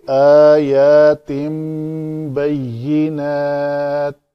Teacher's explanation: نون جو ہے وہ اس با کے ہونے کی وجہ سے میم بن جائے گی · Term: اقلاب